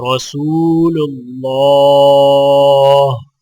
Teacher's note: را کے اوپر زبر ہے تو لہٰذا را موٹی پڑھی جائے گی، اور اللہ کے لام کے اوپر کھڑا زبر ہے تو اللہ کا لام موٹا پڑھا جائے گا، اور کھڑی زبر ہونے کی وجہ سے ایک الف کے برابر کھینچ کر پڑھا جائے گا۔